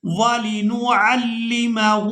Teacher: ہا کو الٹا پیش کی وجہ سے کھینچ کر ادا کریں گے